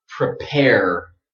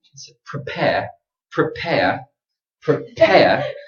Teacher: But this sound here, air, that's British. British speakers don't pronounce a strong R at the end.